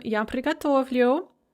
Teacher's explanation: end in a consonant so pricatovit to prepare or to cook in the yaw form the stress is still on the stem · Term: stress on the stem